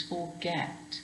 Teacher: get is more stressed it's not like fussing where it's unstressed it's forget now because that's stressed forget we have to look